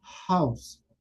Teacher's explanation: debe sonar como si fuera una J suave, aspirada o exhalada, como las palabras del inglés.